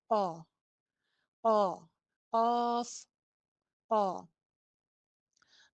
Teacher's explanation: इसका मखरिज जो है वो हलक का बिल्कुल शुरू वाला हिस्सा है, जहाँ पे वो एक हलक के अंदर कव्वा सा लटक रहा होता है ना, जुबान वहां से ऊपर की तरफ उठती है और वो कव्वे वाली जगह पे लगती है।